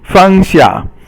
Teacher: Fang xia is both fourth tone or falling tone